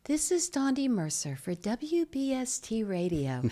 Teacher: Very high, soft voice, and I really had to train to bring it down and make it stronger.